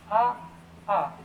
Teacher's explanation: अ आ की ध्वनि कहां से निकलती है बेटा? कंठ से निकलती है।